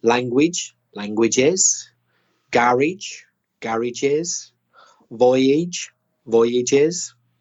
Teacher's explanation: example similar to that language languages garage garages voyage voyages etc so be careful with the plural to add the extra vowel sound